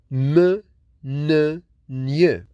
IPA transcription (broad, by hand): m, n, ŋ